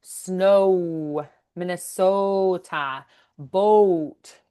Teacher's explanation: we're going to have really long O's, deep and rounded O's. So like snow, Minnesota, boat, you're going to really elongate and stretch those O's. · We're gonna have really long O's, deep and rounded O's.